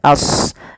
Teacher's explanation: Kemudian pada lafal ashabu, sodnya tebalkan as, jangan ashabu, jangan sin, tapi dia huruf sod sesuai dengan makhraj dan sifatnya.